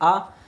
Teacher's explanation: मुख द्वार जब हमारा पूरा खुला हुआ होता है तो उस स्वर को हम लोग क्या कहते हैं? विवृत स्वर कहते हैं।